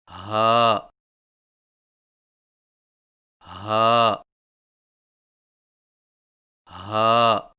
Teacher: ہا کی ادائیگی میں زبان کی جڑ کو حلق کی طرف دبائے بغیر باریک اور بغیر رگڑ کھاتی سانس میں پڑھیں